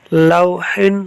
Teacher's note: لام کو واولین کی وجہ سے نہیں کھینچا